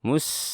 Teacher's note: ada sin yang bersifat rokhawah, sama dialirkan lagi suaranya